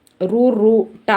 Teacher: మూర్ధన్యము అంటే నోటి పై భాగము నుండి పుట్టినవి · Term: మూర్ధన్యాలు